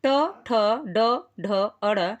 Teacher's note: ट ठ ड ढ अड़ ये मूर्धा से उच्चरित होते हैं।